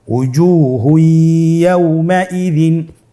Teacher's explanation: তানবিনকে পরবর্তী হরফের সাথে মিলিয়ে গুন্নার সহিত পড়তে হবে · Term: ইদগামে বাগুন্না